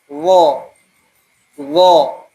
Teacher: lidah lengket lengket dengan langit-langit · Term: huruf idbak